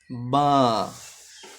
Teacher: তারপরেরটা, এইটার নাম বা। বা একদম স্বাভাবিক, দুই ঠোঁট একসাথে করে পড়বেন। বা। এইটার নাম তা।